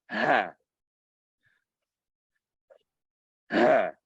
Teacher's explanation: The difference is when you breathe normally, you're not constricting the vocal cords to tighten the passage. But when you pronounce ha, you constrict the vocal cords to tighten the passage